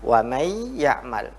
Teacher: Wa may ya'mal, ini bacaannya adalah disebut dengan nun, setelahnya ada ya, maka nunnya itu masuk ke ya. Ini dinamakan dengan idgham.